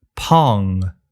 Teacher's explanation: this is like an N with your tongue up in the back rather than in the front